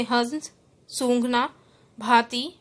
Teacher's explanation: जब इसका उच्चारण किया जाता है तो वायु नाक व मुख दोनों से निकलती है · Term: चंद्रबिंदु